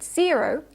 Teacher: in zero the first syllable is stressed · the syllable that has the O vowel is not stressed · But as you can hear when I pronounce the word zero, the O vowel is not reduced, even though it's not stressed.